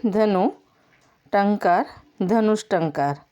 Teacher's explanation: विसर्ग लोप पाकर यहाँ मूर्धन्य स हो गया